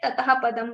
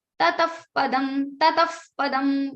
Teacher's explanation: Because there is visarga is followed by pa or fa, then the fa sound will come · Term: Upadmaniya